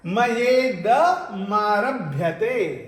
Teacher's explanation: आ और ई मिलकर के ए बना, और इदम का द के साथ में जो जुड़ा हुआ म था वो स्वर के साथ जुड़ गया तो मा बन गया। मयेद मारभ्यते।